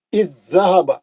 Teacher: 2 same حرف ہے نا، با کے بعد با آنا، تا کے بعد تا آنا، پہلا ساکن دوسرا مشدد، تو وہ دونوں میں ادغام ہو جاتا. زال ساکن کا زال مشدد میں ادغام ہو گیا، ایک زال غائب ہو گیا، ساکن زال غائب ہو گیا. اب سیدھا الف کے زیر سے اب مشدد میں چلے جانا. · ساکن غائب ہو جاتی، مشدد میں چلی جاتی، نہیں پڑھتے، چھوڑ دیتے، ختم ہو جائے گا. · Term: ادغام متماثلین